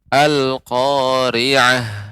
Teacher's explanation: aliran udara ketika mengucapkan ha ya, karena ini merupakan sifat huruf ha yaitu hamas, mengalirnya udara · tal marbutoh ketika disukunkan maka berubah menjadi huruf H, dan H yang disukunkan sifatnya adalah hamas, mengalirnya udara.